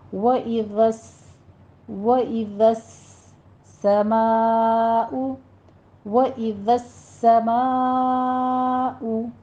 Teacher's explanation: پہلے دال نرمی سے بغیر سیٹی کے، آگے سین ہے، سین میں سیٹی آ جائے گی اور سین کے اوپر تشدید بھی ہے۔